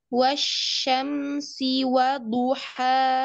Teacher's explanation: ini syin pakai Tengah lidah bukan pakai pangkal lidah maka e suaranya tipis